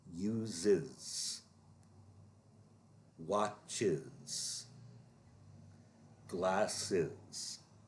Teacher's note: in each case, the S is a separate syllable